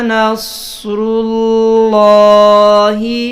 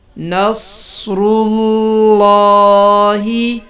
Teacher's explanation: نصر اللہ، لفظ اللہ سے پہلے لفظ پر جب بھی زبر یا پیش ہو، جیسے یہ را کے اوپر لفظ اللہ سے پہلے را کا لفظ ہے، اس کے اوپر پیش ہے، تو لفظ اللہ کی آواز کو پر یعنی موٹا پڑھیں گے